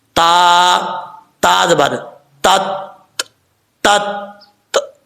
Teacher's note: تا کے اوپر کیونکہ شد ہے جزم نہیں ہے تو اس لیے اس کو تھوڑا سا زور دے کے پڑھیں گے دباؤ کے ساتھ